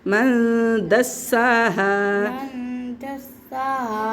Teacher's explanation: सी को सीटी के साथ पढ़ना है और खड़ी हरकत दोनों खींच के पढ़नी है।